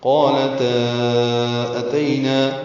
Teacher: اب تا کو 4 حرکات لمبا کیا ہے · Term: مد منفصل